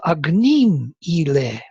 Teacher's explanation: So Anushtup, in terms of Vedic Anushtup, yes, it has to fit the word with agnim, the stress on the second syllable, into its picture. So agnim ile fits very well into the first half of the pada, because there is light, heavy, light, heavy.